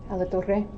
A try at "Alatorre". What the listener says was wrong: just say Alatorre. You don't have to roll your R's.